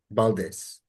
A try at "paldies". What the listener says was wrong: Paldies. We say p instead of b. Like so, paldies.